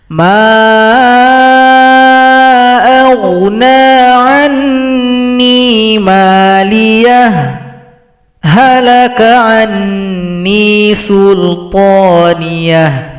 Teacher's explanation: kita berhenti sejenak pada ayat 28 tapi tahan nafas. Tahan nafasnya kira-kira 2 ketukan, langsung sambung berikutnya dengan ayat 29.